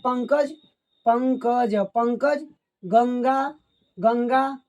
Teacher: क है ग है जो कि क वर्ग का है इसलिए अंग का उच्चारण होगा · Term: अनुस्वार